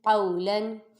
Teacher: قاف واو زبر قو، لام 2 زبر لن، قولن، قاف پہ واولین اور لام منون، دونوں کو بغیر کھینچے بغیر جھٹکا دیے معروف پڑھیں گے اور قاف کو پر پڑھیں گے کیونکہ حروف مستعلیہ میں سے ہے